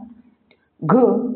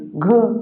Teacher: घ हा वर्ण कंठ वर्ण आहे